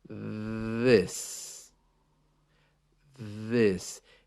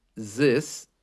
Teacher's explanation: you put your tongue just out past your teeth and let the air vibrate through it this this it sounds a little bit like Z this but